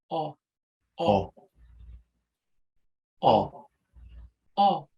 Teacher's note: the surface of the back of the dorsum is going to be dropped. The term is cupped. For me, inside of my own body, it feels like I'm just pulling it all the way down.